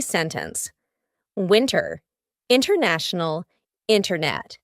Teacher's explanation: you're going to hear native speakers, when we're speaking quickly, you're going to hear us completely cut out that T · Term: glottal T